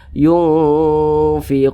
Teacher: kadar samar dan kadar dengungnya itu seimbang kemudian didengungkan suaranya itu kita tahan kita panjangkan sejenak